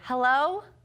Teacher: it came out I sounded like a little girl and that is because it was the highest of the high